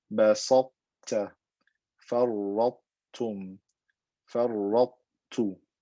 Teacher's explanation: Not complete idgham, but partial idgham. The fatness of the ta or the tafkhim of the ta remains, and then I exit with that skinny ta.